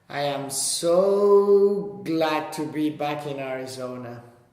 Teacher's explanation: So we can draw out the so, and then go a little bit more briefly over the next to the end of the line.